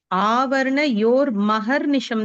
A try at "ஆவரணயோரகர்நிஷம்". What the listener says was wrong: அகர்நிஷம் ஆமா, மாவே கிடையாது. ஆவரணயோரகர்நிஷம்.